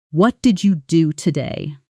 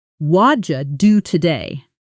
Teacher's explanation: The words what did you blend together into something closer to waja. This is called connected speech and it happens constantly in natural English.